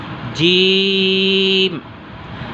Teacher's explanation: یعنی اس کو آپ نے زبانی یاد کر لینا ہے کہ زبان کا درمیان اور تالو کا درمیان آپس میں ملے، یعنی زبان کے بیچ کا حصہ اوپر کے تالو سے لگائیں تو ادا ہوتا ہے جیم